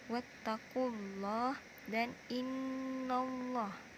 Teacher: dibaca tebal karena lam jalalah sebelumnya ada baris dhammah atau fathah pada kata wattaqullah dan innallah. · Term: lam jalalah tafkhim